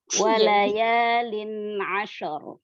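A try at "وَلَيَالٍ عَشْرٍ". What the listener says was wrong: Nunnya apa? Jelaskan lagi. Lin, walayalin. Makhrajnya kurang nempel.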